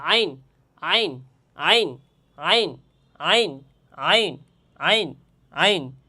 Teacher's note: গলাতে একটু নিচের দিকে দাবাইয়া, যেমন হার ক্ষেত্রে বলছিলাম একটু নিচের দিকে দাবাইয়া গলার মধ্যখান থেকে উচ্চারণ হবে আইন হা আইন হা আইন হা আইন, এভাবে উচ্চারণ করতে হবে আইন আইন আইন আইন আইন আইন আইন আইন।